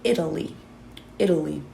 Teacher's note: within the general American accent, that T might become a D sound, right? We hear that in a couple of other words.